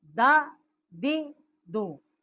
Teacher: ثنایا علیہ کی جڑ سے جب زبان کی نوک ٹکر کھائے تو اس سے اس کا مخرج ہے دال کا